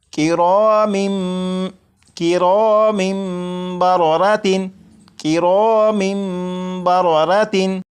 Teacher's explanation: जब तनवीन के बाद बा है तो यहाँ पर इकलाब होगा, यानी यहाँ पर तनवीन के अंदर जो नून साकिन की आवाज़ होती है उसे मीम से बदलकर गुन्ना करके पढ़ेंगे